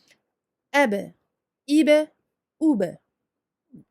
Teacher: Donc on sait que, par exemple, pour le ba, ce sont les lèvres en fait qui se touchent, et on rouvre les lèvres aussitôt. Sans aucune durée entre la fermeture et l'ouverture des lèvres. Et c'est ce qui provoque en fait ce rebondissement ou cette qalqala en arabe.